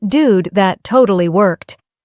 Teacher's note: Focus on intonation rising at dude and dropping at worked.